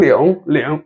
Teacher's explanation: remember this final that comes with the g at the end, okay? It pronounces by squeezing your nose a bit. 领 导 without the g, it will pronounce it as ling, ling.